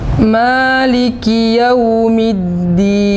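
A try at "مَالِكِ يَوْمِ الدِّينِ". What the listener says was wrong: Linnya lebih lunak ya. Maliki Yaumiddin.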